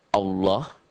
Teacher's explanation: lafaz Allah ini dibaca tebal berbunyi o